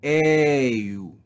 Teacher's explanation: To make the long vowel sound and then shift to the upsilon is difficult to pronounce, and it's not very pleasant to hear. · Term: improper